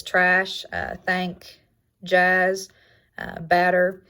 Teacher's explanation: Its description is low front, unrounded, and lax